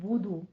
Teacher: بدو نہیں ہے، بودو با کے اوپر پیش ہے اور دو کو تھوڑا لمبا کھینچ لینا ہے، 2 کاؤنٹ کرنے ہیں